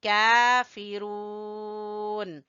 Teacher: را کو کھینچیں گے واو مدہ کی وجہ سے